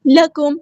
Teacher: لام اور کاف دونوں باریک لائٹ لیٹر ہیں اور میم ساکن پہ اظہار شفوی ہو رہا ہے، یہاں پہ ٹائم نہیں دینا۔